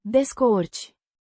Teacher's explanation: with stress on the second syllable